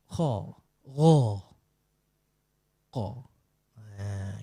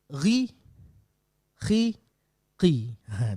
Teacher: Isti'la terangkat pangkal lidah naik